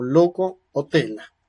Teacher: la punta de la lengua se pone en los alveolos pero el sonido y el aire por lo tanto sale por los lados de la lengua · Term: lateral